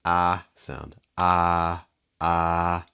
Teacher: So when you made that G, you raised the back of your tongue. And when you made that ah, you lowered the back of your tongue